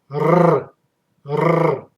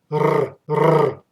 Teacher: The tongue should vibrate, and from this vibration you will get a perfect sound of the letter R